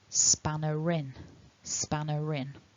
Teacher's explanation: For me as an English speaker of English, if you go to the dictionary and you look up the word spanner, the phonemic script will give you a very small letter R at the end of the word, and that's our linking R. So if I say the word spanner in isolation, I don't pronounce the R. But if it's followed by a vowel, like with the word in, we get this linking